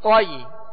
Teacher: تو کو ادا کرتے ہوئے ہونٹوں کو گول نہیں کریں گے. توئی، توئی نہیں پڑھیں گے.